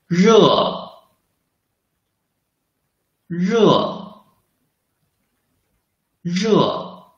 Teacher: let the air squeeze out between the tongue tip and the hard palate · The sound is produced by rolling up the tip of tongue toward the front end of hard palate. Then let the tongue tip touch the hard palate lightly.